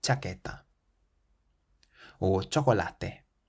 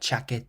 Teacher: the CH in Spanish is slightly softer than the CH in English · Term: soft CH